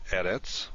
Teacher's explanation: already looked at more than once edits is a word that has the stress on the first syllable not at the end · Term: tonic syllable